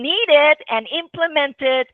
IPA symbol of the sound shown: ɪd